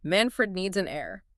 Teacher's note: The H is completely silent. It sounds exactly like the word air, A-I-R, the stuff we breathe, fresh air.